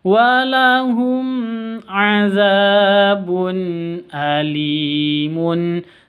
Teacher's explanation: tanwin bertemu dengan Hamzah jelas bacanya karena izhar halqi ng izhar halqi itu jelas Seca bacanya tanwinnya jelas hamzahnya juga